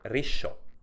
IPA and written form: riʃò (risciò)